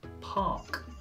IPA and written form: pɑːk (Park)